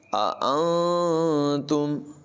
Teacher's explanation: اَأَنتُم دو حمزہ ہیں اور یہاں پر نون ساکن کے بعد تا حرف اخفا میں سے ہے، اخفا کریں گے یعنی غنہ کریں گے، ناک میں آواز چھپائیں گے